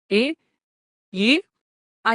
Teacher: కంఠ తాలవ్యాలు గొంతు మరియు అంగిలి రెండు కలిసి పని చేసినప్పుడు ఏ ఐ అచ్చులు పుడతాయి.